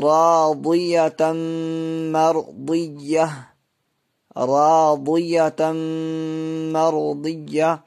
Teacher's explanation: تنوین کے بعد حروف یومین کے 4 حرفوں میں سے میم آ رہی ہے، اس لیے ادغام ناقص ہوگا۔ مرضیہ، تو گولتا پہ جب بھی وقف کرنا ہو تو وہ ہائے ساکنہ یعنی جزم والی ہا بن جاتی ہے۔